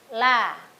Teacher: huruf yang keluar dari tepi lidah bagian depan hingga ujungnya. Tempat menempelnya adalah gusi atas. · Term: huruf la